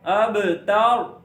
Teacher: با پہ قلقلہ اور را کو موٹا پڑھنا ہے